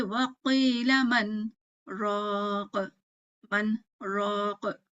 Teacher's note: ٹھیک ہے، تو ہم کہیں گے وقیل من راق، من راق. ٹھیک ہے، اظہار کیا ہم نے، ہے نا. نون کو نون کی طرح پڑھا، را کو را کے پڑھا. تو یہاں اظہار کیا کیونکہ سکتے نے توڑ دیا.